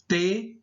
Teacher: São pronunciadas pelo contato entre a língua e os dentes. Você tem aí T, né, T, a sua língua tocando o dente superior, T, e quando fala o som, ele ainda dá um leve toque no dente inferior. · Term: linguodentais